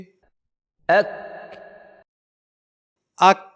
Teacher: हरफे काफ का मखरज है हलक की तरफ से जुबान का आखिरी हिस्सा और ऊपर का तालू यानी जुबान का आखिरी हिस्सा जब ऊपर के इस तालू से टकराता है तो हरफ काफ अदा होता है। · حرف کاف کا مخرج ہے حلق کی طرف سے زبان کا آخری حصہ اور اوپر کا تالو، یعنی زبان کا آخری حصہ جب اوپر کے اس تالو سے ٹکراتا ہے تو حرف کاف ادا ہوتا ہے.